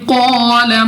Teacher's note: قاف مستعلیہ میں سے ہے، موٹا پڑھیں گے منہ اور آواز کو کھول کر. الف سے پہلے زبر بھی ہے تو الف مدہ ہے، ہم نے 2 سیکنڈ تک کھینچ کر یعنی لمبا کر کے پڑھنا ہے